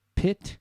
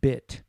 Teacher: And the P and B are very similar, except the P has no voice and the B is voice